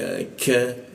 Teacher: lidahnya diturunkan sehingga k-nya itu ada hembusan udara